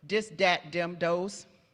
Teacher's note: D for the voice TH in pre-vocalic position, so at the beginning of a word. Dis, dat, dem, dos is really common.